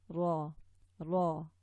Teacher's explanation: Okay, when you say r, the tongue has just rolled back and it doesn't even touch the top palate at all. In Arabic, the ra touches and it's quite forward. The tip comes quite forward towards the outside of the mouth and towards the front teeth, the inside gums of the front teeth. · You hit the hard palate with the tip